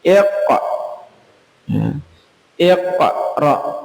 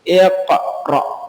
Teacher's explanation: yang roknya itu hamzah, jadi tidak terlalu tebal, tidak sampai ke kerongkongan seperti ain. Jadi iqra, bukan sampai iqra.